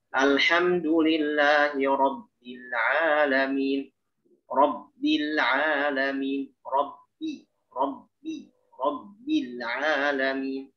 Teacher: Sempurnakan syiddah ba sehingga ba itu keluar dengan huruf ba yang asli, bukan campuran.